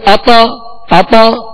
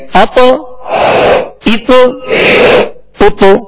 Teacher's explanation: مخرج میں لگ کر آواز میں جنبش ہوگی، آواز لوٹتی ہوئی آئے گی. اتو اتو اتو. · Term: قلقلہ